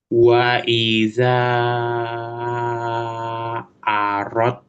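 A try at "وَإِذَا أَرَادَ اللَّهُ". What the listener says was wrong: Aro, aro, aro, bukan arod, bukan, nggak masuk ke dal dia. Matobi'i aja.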